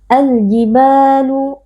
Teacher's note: karena ada Alif yang sebelumnya berharakat fathah kita baca panjang dua harakat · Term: Mad thii